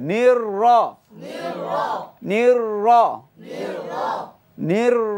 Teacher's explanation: এখানে র কয়টি দুইটি নির র র নির নির নির নির দুইটি র এ মোটা হবে আগে জের আছে সেজন্য পাতলা বলা যাবে না মোটা করে পড়তে হবে